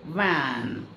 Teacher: அந்த மேல் பல் வந்து கீழ் உதடு தொட்டு இருக்கும். It's called labio dental.